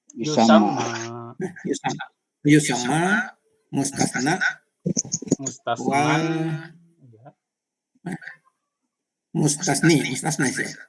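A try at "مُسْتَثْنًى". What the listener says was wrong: Di tanwin aja cara bacanya. Mustasnan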